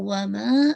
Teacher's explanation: Because आप देख रहे हैं कि हमजा नेक्स्ट वर्ड में आ रहा है, और हमजा की वजह से जो सबब हमजा है मद्दुल फरई, उसमें से एक जो मद बनती है उसका नाम होता है मद्दुल जायज मुनफसल, ठीक है। जब हमजा नेक्स्ट वर्ड में आता है तो वमा, आप इसको 4 to 5 काउंट स्ट्रेच करेंगे